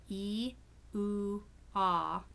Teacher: So the ones that are held longer, E, oo, ah, are all long vowels, and they have the designation of plus tense.